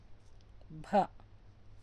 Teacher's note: భ, మహాప్రాణాక్షరం భ అని పలకాలి, కొంచెం గట్టిగా పలకాలి.